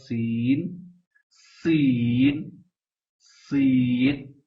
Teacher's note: سین جب مخرج ہوگا تو دونوں دانت بند ہو جائیں گے اور اس کی آواز باریک جیسی آئے گی، سیٹی کی طرح آئے گی۔